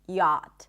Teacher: Just like a Y Sound, AA as in 'father', and the T